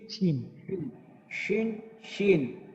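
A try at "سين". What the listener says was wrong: না শিন শিন না, সিন শিন, সিন শিন। সিন শিন। সা, সা, সামিয়া, সামিয়া। এটা যদি আমাদের শা হয়ে যায়, সামিয়া হয়ে যাবে।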